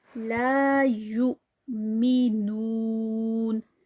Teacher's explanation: لا یؤمنون، لا الف مد 2 counts، یو پہ حمزہ جو ہے وہ جزم کے ساتھ ہے تو تھوڑا جرک ہے. یو می نون، نو جو ہے وہ یہ 4 counts کا اسٹریچ ہوگا واو مدہ کا.